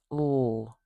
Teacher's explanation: So what I'm doing there is I'm putting my tongue up where we would say in English L, but instead of letting the air spill out over the sides of my mouth, just kind of freely moving without any friction, oh, I am constricting the airway a little bit so we get a little bit of turbulence in the air. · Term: lateral fricative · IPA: /ɬ/